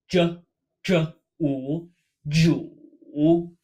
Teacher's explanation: This character sounds very similar to Jew in English. However, we have to roll our tongue back to make this kind of throaty dr sound. And then a very strong u.